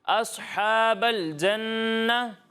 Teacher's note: صاد کو پر پڑھنا ہے, حمزہ کو جو ہے وہ باریک پڑھنا ہے. ٹھیک ہے, حمزہ کو پر نہیں پڑھنا.